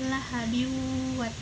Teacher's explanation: Jadi nun mati, jadi tanwin bertemu dengan waw. Dibacanya tanwinnya dimasukkan ke waw dan dibaca dengan dengung. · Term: idgham bigunah